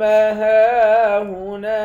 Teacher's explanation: ہاں پر کھڑا زبر ہے، ایک الف کے مقدار کھینچ کر پڑھتے ہیں۔ نون کے بعد الف ہے، اس الف کو بھی ایک الف کے مقدار کھینچ کر پڑھیں گے، الف حرف مدہ ہے۔